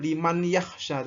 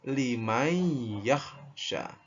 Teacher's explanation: Jadi nunnya ya, nunnya ini kayak dihilangkan. Jadi langsung mimnya masuk ke ya. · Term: idgham bi gunnah